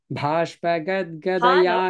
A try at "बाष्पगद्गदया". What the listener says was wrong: not bha, ba.